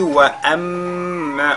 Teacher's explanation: on fait al-ghunna sur la lettre mim mushaddada.